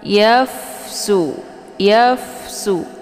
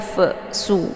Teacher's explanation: dibunyikan anginnya secara samar-samar jadi tidak begitu jelas yafsu yafsu jadi Fa ini jangan dilepaskan ya tapi dialirkan sehingga tidak keluar suara yang memantul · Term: Hamas